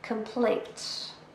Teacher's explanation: A noun, 2 syllables, and we stress the second.